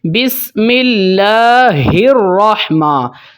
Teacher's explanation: یہ جو اللہ والی ہا ہے یہ حلق کے نیچے والے حصے سے ادا ہوتی ہے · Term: گول ہا